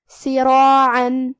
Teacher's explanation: کلمت سراعا میں حرف الراء پہ زبر ہے. یہاں راء کا حکم ہے تفخیم، لہذا ہمیں راء کو موٹی آواز میں پڑھنا ہے. اور کیونکہ اس کے بعد مد الف ہے اور مد الف اپنے پیچھے والے حرف کا حکم لیتا ہے تفخیم میں اور ترقیق میں، تو ہم مد الف کو بھی بھاری آواز میں ادا کریں گے.